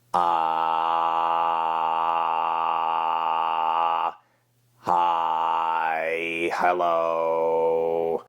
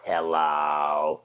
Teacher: You're very monotone in the delivery.